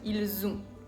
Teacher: hacemos la liaison y decimos ils ont con un sonido z